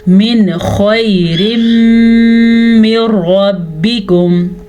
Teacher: نون ساکن کے بعد خا ہے تو نون ساکن کو ظاہر کر کے بغیر غنے کے پڑھیں گے